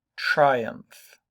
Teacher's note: 2 syllables. That try gets a very, very strong, hard stress.